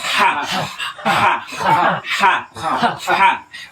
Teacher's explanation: ada bermain sedikit di tenggorokan tapi enggak pakai r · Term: ha pedas